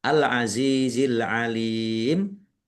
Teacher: Za kasrh ya sukun. Mad thobi'i panjang dua harakat.